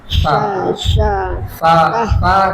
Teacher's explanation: Ujung lidah ke gigi seri atas.